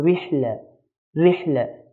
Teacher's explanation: We have ra here with a kasra. Whenever we have a ra with a kasra, do not look at what's before it or after it. It will automatically be light.